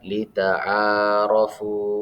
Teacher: Nah, di sini juga terdapat hukum bacaan mad tabi'i, di mana huruf baris fathah bertemu alif, kemudian baris dhamma bertemu waw sukun. Jadi cara membacanya dipanjangkan selama 2 harokat